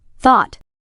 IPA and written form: θɔːt (thought)